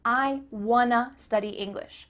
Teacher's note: the word to changes to uh · Here we're changing want to wanna. Again, the word to changes to a.